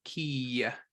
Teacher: Hirik Malay, or hirik Yod, is pronounced E, as in ki. We kind of add that little nuance of a ya at the end. Not a whole lot, just a little bit.